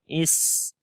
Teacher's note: سین کے اندر صفت حمز ہے, سانس جاری ہوگا. اس اور اسی طرح اس کے اندر صفت صفیر ہے, یعنی سیٹی کی آواز یہاں پر آئے گی.